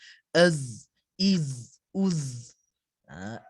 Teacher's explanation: Huruf zai ini dia ada bunyi lebah dia tu. Ataupun ada setengah orang kata bunyi karen.